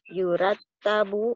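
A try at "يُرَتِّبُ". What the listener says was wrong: Nah, kasroh lagi. Kembali lagi ketemu kasroh ya. Pasti di bawahnya kasroh kan. aja. Kasroh. I.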